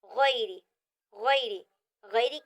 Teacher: یہاں پر جو غیری کی جو را ہے وہ باریک پڑھی جائے گی، پر نہیں پڑھی جائے گی کیونکہ یہاں پر را کے نیچے زیر ہے۔ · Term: را باریک